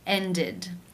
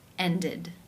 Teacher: the ed is pronounced with the I as in sit and the d sound.